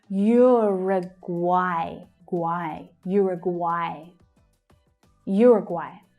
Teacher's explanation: you can hear at the end there that AI is pronounced as I, like by. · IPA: /aɪ/